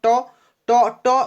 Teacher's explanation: দেখুন জীবার অগ্রভাগটা উল্টে যাচ্ছে উল্টে গিয়ে কোথায় টাচ করছে যে জায়গায় টাচ করছে সেটা হচ্ছে আপনার মূর্ধ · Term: মূর্ধন্য ব্যঞ্জন